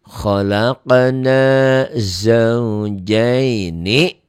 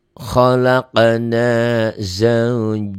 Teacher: huruf lin yang ketemu satu huruf hidup dihentikan, berubah namanya, berubah panjangnya jadi madlin